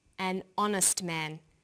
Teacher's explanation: The H is not pronounced, so honest sounds like it starts with a vowel.